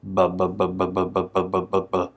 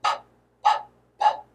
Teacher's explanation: I can feel it vibrating when I say the b, b, b sound. With p, p, p, there is no vibration here.